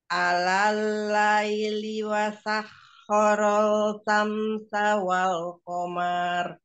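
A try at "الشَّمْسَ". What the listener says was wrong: Shinnya nggak terbaca ya. Alal ladhi wasakhkhara asy-syamsa wal qamar. Alal laili wasakhkhara asy-syamsa wal qamar.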